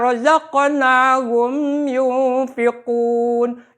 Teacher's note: mim ketemu ya adalah idhar syafawi. Jadi ngucap mimnya adalah harus jentrek jelas.